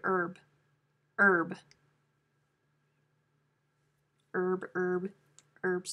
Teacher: some speakers of american english pronounce the h but the vast majority keep the h silent